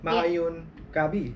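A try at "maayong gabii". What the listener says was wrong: Yes, maayong gabi. Correct.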